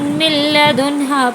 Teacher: یہاں نون ساکن کے بعد لام آیا ہے تو بلا غنہ کی ملا کر پڑھیں گے